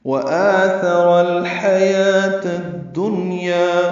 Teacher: ہا وسط حلق سے ادا کریں گے ، یا کو 2 حرکات لمبا کرنا ہے، واو نہیں پڑھنا، · کی نا تمام گلائی سے ادا کریں گے، جلدی پڑھیں گے، مد بدل ہے، 2 حرکات لمبا کریں گے